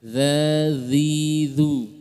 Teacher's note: dia sifatnya adalah rokhwah dan sedikit lidah ujung lidah dikeluarkan. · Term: zal